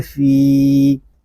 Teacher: فا یا زیر فی، فا کو ہم ایک الف تک کھینچ کر پڑھیں گے کیونکہ یہاں پہ یا مدہ ہو رہا ہے. یا مدہ اس لیے ہو رہا ہے کہ یا ساکن سے پہلے زیر آ گیا ہے.